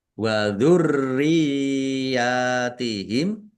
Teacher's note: Rnya ada tasdidnya dibaca dobel ditekan biar tampak dobelnya